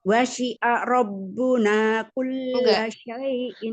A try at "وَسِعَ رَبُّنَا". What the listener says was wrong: Enggak dipisah. Enggak wasi'a rabbuna, enggak. Sambungin ya. Wasi'a rabb. Enggak wasi'a rabb. Enggak sukun itu wasi'a tetap dibuka ya. Ismul harakat tetap enggak boleh hilang gitu ya. Cuman kalau yang bacaan pendek jangan diayun ya. Jadi enggak sengaja nantinya dia ketarik setengah.